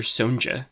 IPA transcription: soʊ̯n.d͡ʒə